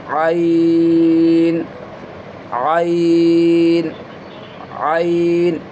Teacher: اس کا جو پلیس ہے, مخارج کے جو پلیس جگہ ہے وہ مڈل پارٹ آف تھروٹ ہے, یعنی گلے کا جو بیچ کا ہے, وسط حلق. عین اینڈ ہا یہیں سے پروناؤنس ہوتا ہے, یہیں سے ادا کیے جاتے ہیں.